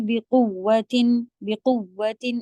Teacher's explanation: واو مشدد ہے تو آپ کیسے پڑھیں گے؟ بقوتن بقوتن، اس طرح سے زور دے کے. یہاں پہ تنوین کو نہیں کھینچیں گے کیونکہ آگے حروف حلقی میں سے آ گیا ہے تو نون کو پھر نہیں کھینچا جاتا ہے، غنہ نہیں کیا جاتا ہے، ظاہر کر کے پڑھیں گے صاف.